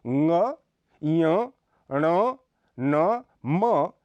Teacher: संघर्षी का इनमें च छ ज झ व्यंजन आते हैं नासिक्य इनके उच्चारण में श्वास वायु नाक से निकलती है